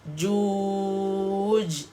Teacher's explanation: Jim, bila kita berhenti di sini, huruf yang hujung kena qalqalahkan dia, kena ada lantunkan dia, matikan dia.